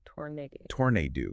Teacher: tornado has the stress on the second syllable